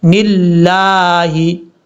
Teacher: لفظ اللہ سے پہلے یہ آپ کو نون کے نیچے زیر نظر آ رہا ہے، اس لیے ہم یہاں پر اس کو پر نہیں پڑھیں گے، بریک پڑھیں گے